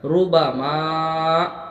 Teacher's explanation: را پر پیش ہے، را کو پر پڑھیں گے ہم، اور با پر ما، میم علی زبر ما، اس میں الف مدہ ہو رہا، ایک الف کے برابر کھینچ کے پڑھیں گے۔